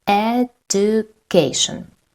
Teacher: The third syllable is stressed, not the second